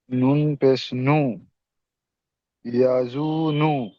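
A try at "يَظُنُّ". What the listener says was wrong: ইয়াজুন নয়, ইয়াজুন্নু, ইয়াজুন্নু, এখানে নুনের উপরে তাসদিদ এসছে, তাই এখানে নুনটাকে একালি পরিমাণ গণ্য করতে হবে, গণ্য করা ওয়াজিব। নুনের উপরে তাসদিদ কিংবা মিমের উপর যদি তাসদিদ থাকে তাহলে গণ্য করা ওয়াজিব। তাহলে ইয়াজুন্নু, জুন বলে এখানে গণ্য করতে হবে, ইয়াজুন্নু, ইয়াজুন্নু।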